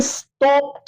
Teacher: ईडी डा के बजाय टी टे की आवाज देते हैं। यानी नेटिव स्पीकर उसे स्टॉप्ड कहते हैं, ना कि स्टॉप्ड।